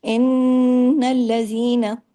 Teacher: نون پہ تشدید ہے، ڈبل نون ہے، بڑا غنہ ہے